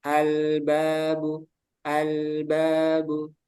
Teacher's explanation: lam itu memiliki sifat bainiah jadi tengah-tengah dia mengalir tapi sedikit aja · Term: sifat bainiyah